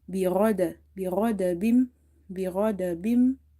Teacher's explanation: Ghain is from the upper part of the throat, is from the halqiya letters, as well as is from the musta'aliya letters. Musta'aliya letters are such letters which we read heavy under any condition.